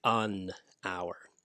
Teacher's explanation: the first sound you hear is not that h the first sound you hear is ah ah that is a vowel sound because of that we use an hour all right you don't